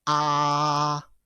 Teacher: first tone ladies and gentlemen sounds like ah it's a high pitch